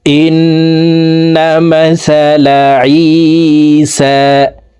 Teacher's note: তো এখানে দেখুন, হরকতের বামে নুনের উপরে তাসদিদ আছে, এই কারণে জেরওয়ালা হামজাটি তাসদিদওয়ালা নুনের সাথে 3 সেকেন্ড পরিমাণ গুন্নাহ করব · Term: ওয়াজিব গুন্না